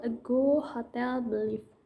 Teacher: the first syllable bears the weak stress and the second syllable primary stress. For example, a go, hotel, believe.